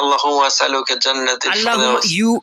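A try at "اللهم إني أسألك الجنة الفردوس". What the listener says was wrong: You missed one word. Allah after Allahumma. You are missing one word between Allahumma and as'aluka. Inni, you are missing inni.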